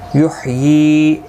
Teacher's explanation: یا کے نیچے کھڑی زیر ہے، ایک الف کی مقدار کے برابر کھینچ کر پڑھیں گے